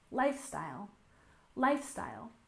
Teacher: And finally, we have lifestyle, with stress on the first syllable.